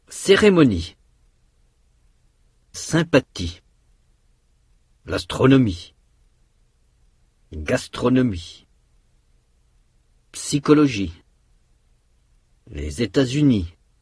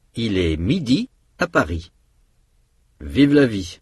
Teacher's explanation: Ah, c'est gentil ici. Notez que le son I est fermé et long. C'est le même au début, au milieu et à la fin d'un mot.